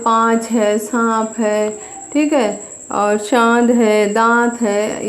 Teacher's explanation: मुख और नासिका दोनों से निकलती है और तो इस वर्ण को हम अनुनासिक कहते हैं